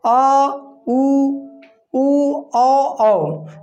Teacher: जीभ के पिछले भाग से इनका उच्चारण हो रहा है। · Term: पश्च स्वर